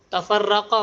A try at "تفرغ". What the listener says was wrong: نہیں غین.